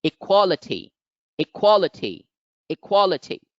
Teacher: the stress mark so it is the one which is accented all the other syllables can be pronounced lightly but the second syllable must be stressed